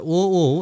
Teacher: ও এটা কন্ঠ আর অষ্ট লাগে